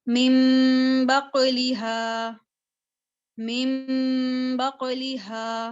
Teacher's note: दो चीजें हो गई ना, कि हमने नून को मीम से बदल दिया और दूसरी चीज क्या होगी कि हमने नून पर इसको मीम पर गुन्ना करना है · न की आवाज नहीं आएगी, न की आवाज को मैं मुकम्मल तौर पे छुपा दूंगी, उसको मैं किससे तब्दील कर दूंगी, ये जो मीम है ना ऊपर, इससे मैं इसको तब्दील कर दूंगी। · गुन्ना जो होता है 1 सेकंड के लिए होता है